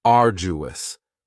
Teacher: arduous has 3 syllables, and the stress is on the first syllable, arduous. Now you don't hear that D sound that much.